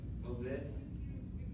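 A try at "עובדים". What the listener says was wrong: Look at it carefully. It has a yud mem at the end, so it's Ovdim.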